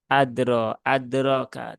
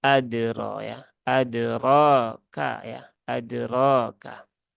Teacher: Tetapi dia terbaca dengan adro ya adroka ya adroka nah jadi Qalqalah dalnya itu jangan dibaca berlebihan ya tapi cukup disentuhkan saja ke eh makhrajnya kemudian segera dilepas kembali